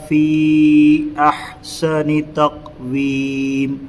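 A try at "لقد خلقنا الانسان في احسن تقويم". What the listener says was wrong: یہاں پہ غنہ نہیں ہوا، پھر اس کے بعد یہ قلقلہ نہیں ہوا، خادہ نہیں ہوا، یہاں قلقلہ نہیں ہوا۔ پھر سے میں اس کو پڑھوں۔ یہ دال قلقلہ ہوگا حروف قلقلہ میں سے، اور قاف بھی۔ لقد خلقنا الانسان، یہاں پر بھی قلقلہ ہونا۔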